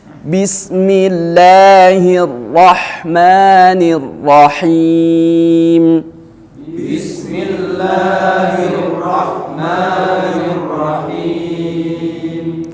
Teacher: Jangan bismillahirrahman, jangan R gitu ya. Jadi ee huruf ro itu sifatnya takrir, pengulangan, akan tetapi mengulangnya tidak bergetar berkali-kali.